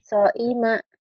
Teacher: Ini bukan ain tapi hamzah. Jangan ke ain.